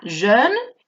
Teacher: E francesa, boca de O, pronunciando una E